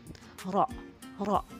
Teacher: Gambaran bunyi huruf ro tafkhim itu seakan-akan bunyi ro memenuhi mulut, rongga mulut.